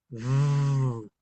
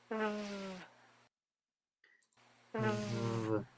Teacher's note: Es vibrante. De hecho, es sonora. No es sorda como la F.